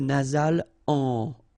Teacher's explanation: you get the nasal en. So you don't hear any M, it's really in your nose.